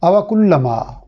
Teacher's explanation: काफ को यहाँ बारीक अदा करेंगे। · लाम की चूँकि तशदीद है और तशदीद का कायदा ये होता है कि हर्फ को इस तरह अदा करें कि 2 बार अदा करने जितना वक्त महसूस हो। मीम की ज़बर के बाद चूँकि हर्फ मद्दा अलिफ है तो ज़बर को 1 अलिफ के बराबर यानी खड़ी ज़बर के बराबर लंबा किया जाएगा।